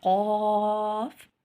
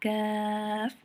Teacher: ऊपर तालू से लगे तो हमारे पास कौफ अदा होता है, और यहाँ पे तालू से हटकर मुंह की जानिब लगे तो, ठीक है, काफ अदा होता है।